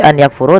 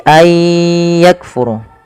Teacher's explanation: memasukkan bunyi Nun kepada huruf setelahnya kemudian disertai dengan gunah maka idgham bunah maka Aya cara membaca nya bukan lagi any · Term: idgham bi gunnah